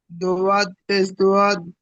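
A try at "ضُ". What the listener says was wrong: দোয়াত পেশ দোয়াত নয়, দোয়াত পেশ দু। আমি তো বলে দিলাম যে পেশের উচ্চারণ উর উচ্চারণ হয়। দোয়াত পেশ দু, ত পেশ তু, এইভাবে।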